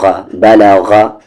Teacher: زبر با، لام پہ زبر لا، غین پہ زبر غا، بلغا، غین کا مخرج اپر تھروٹ اوپر والا حلق